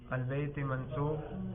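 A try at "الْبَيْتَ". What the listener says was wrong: البیت منصوب. زیر پڑھ رہے ہو اور کہہ رہے ہو منصوب. البیت جی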